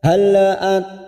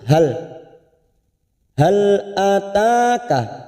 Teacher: hal lam sukun jangan sampai tawalud